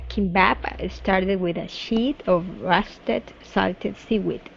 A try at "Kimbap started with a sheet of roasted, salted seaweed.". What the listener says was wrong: Okay. All right, much better with sheet.